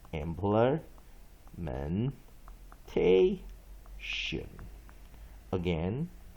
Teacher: secondary stress on first syllable